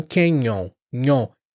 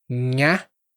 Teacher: A diferença é que o canyon, nyon, o N vai na frente dos dentes e quando você faz o nha, vai atrás, no céu da boca.